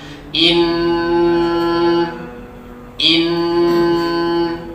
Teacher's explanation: Ada 2 nun yang bertasydid, berarti bacanya wajibul gunnah, wajib berdengung, ditahan, didengungkan antara 2 sampai 3 harokat.